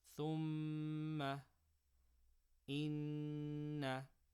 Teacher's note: The rule is that I will always read mim mushaddada and noon mushaddada with ghunna, meaning wherever in the Quran there is a mim mushaddada or a noon mushaddada, I will always read that with ghunna, which means I will extend the sound for 2 harakas from the nose.